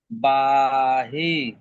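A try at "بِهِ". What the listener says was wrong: বাহি নয়, বাজের বি, বিহি, বাজের বি, হা খারাজের হি, বিহি, বিহি।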